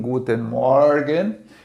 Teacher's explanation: Primeiro, o O, que é um O aberto.